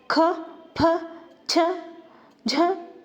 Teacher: ಮಹಾಪ್ರಾಣಾಕ್ಷರಗಳು ಅಂತಂದ್ರೆ ಹೆಚ್ಚು ಉಸಿರಿನಿಂದ ಉಚ್ಚರಿಸುವ ವ್ಯಂಜನಗಳು